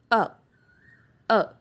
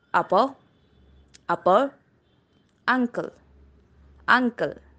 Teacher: Moving further, we have the vowel sound u, u. It is mid open back unrounded vowel.